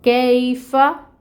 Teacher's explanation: فا میں بھی ہمس ہوتی ہے، کاف میں بھی ہمس ہوتی ہے، دونوں کی صفت ہے ہمس کی۔ فا کے اوپر زبر کی حرکت ہے، 1 کاؤنٹ حرکت کو ادا کریں گے۔